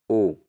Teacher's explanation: तो कंठ ओष्ठ वर्ण कौन सा है दोस्तों, वह है ओ। ओ जो है कंठ ओष्ठ वर्ण है